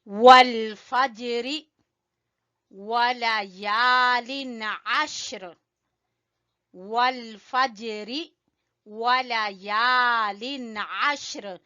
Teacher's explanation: یا کو کھینچیں گے الف مدہ کی وجہ سے